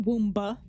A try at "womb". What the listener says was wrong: it's a womb silent B wom it's a silent be